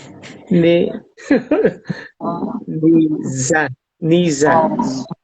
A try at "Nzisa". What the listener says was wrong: No, you pronounce N and Z together. Nzisa.